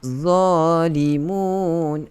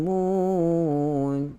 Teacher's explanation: Ujung lidah itu sentuh 2 gigi kacip bahagian hadapan yang di atas tu. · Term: huruf dha